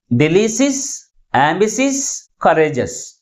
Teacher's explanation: Second syllable is pronounced with a greater force comparing with other syllables. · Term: primary stress